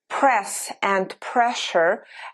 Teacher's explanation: the pronunciation of S changes to sh.